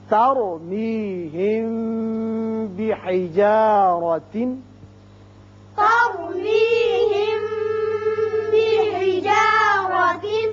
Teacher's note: اب میم ساکن کے بعد با آ رہا ہے، یہ قاعدہ آپ پڑھ چکے ہیں کہ جب میم ساکن کے بعد با آ جائے تو اسے اخفائے شفوی کہتے ہیں، یہاں ایک الف کے برابر آواز ٹھہرتی ہے۔ بحجارہ را کے اوپر زبر ہے اس لیے اس کو پر پڑھیں گے۔